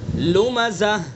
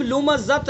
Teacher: ہائے ساکینہ سے بدل دیں گے، یعنی ایسی ہاں سے بدلیں گے جو ساکن ہو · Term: وقف بالابدال